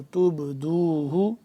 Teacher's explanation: با ساکن ہے تو یہاں پہ ہم قلقلہ کریں گے